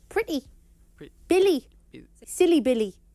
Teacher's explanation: if a word ends with a Y we will hear an E sound however in the Jordy accent this will be shorter